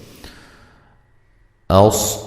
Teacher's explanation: صاد کو موٹا ادا کریں گے، حمزہ کو تحقیق سے پڑھیں گے